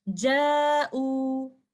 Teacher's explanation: अलिफ से पहले हमें हमजा नजर आ रहा है और अलिफ एक मद कंडीशन में है, तो हम यहाँ पर 2 काउंट स्ट्रेच करते हुए इसको इस तरह से पढ़ेंगे आमनू। यहाँ पर भी हमें वाव एक मद कंडीशन में नजर आ रहा है और उससे पहले चूंकि हमजा है 2 काउंट स्ट्रेच करते हुए इस तरह से पढ़ेंगे जाऊ। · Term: मद्दुल बदल